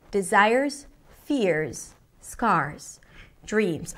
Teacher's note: notice when she hits each one of those stressed words, it hits a different note.